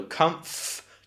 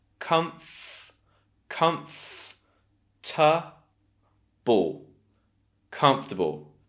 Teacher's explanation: you have that schwa in the middle because it's unstressed